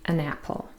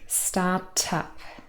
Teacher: starting with a vowel sound and whenever that is the case we're going to link the consonant and the vowel together and that is called catenation and there's no pause in between